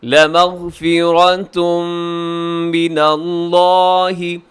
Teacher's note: لَمَغْفِرَةٌ کے آخر میں تنوین کے بعد ہے میم، تو یہاں ادغام ہوگا، ادغام یرملون غننے کے ساتھ، اور اس میں جو را ہے وہ بھی موٹی پڑھی جائے گی۔